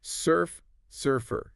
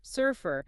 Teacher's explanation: Sounds like surfer, 2 syllables. The stress is on the first part.